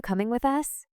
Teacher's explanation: Hear how you becomes ya and the melody stays similar, but faster.